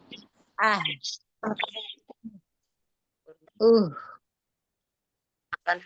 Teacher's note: Untuk ha sukun dikuatkan dengan cara menyempitkan makhrajnya dan menyempurnakan hams dan rafahnya.